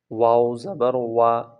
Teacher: واو کو جب پڑھتے ہیں تو دونوں ہونٹ گول کر کے پڑھتے ہیں